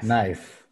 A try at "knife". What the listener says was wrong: Ahora, si quieres, reduce un poquito la que no suene tan larga. Knife. Un poquito más chiquito nomás.